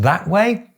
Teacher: the S is in the coda of the first syllable, and the T is in the onset of the second syllable. They belong to different syllables.